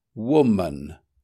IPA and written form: ˈwʊm.ən (woman)